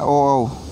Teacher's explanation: ओ, औ किससे बोला जाता है? ओ, औ कंठ व ओष्ठ से बोला जाता है, तो इसे कंठोष्टीय कहेंगे।